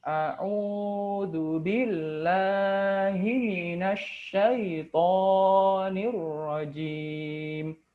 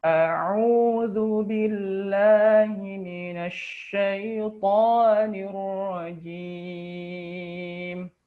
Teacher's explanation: seharusnya bacaan Mad asli atau Mad thii itu cukup dua harakat saja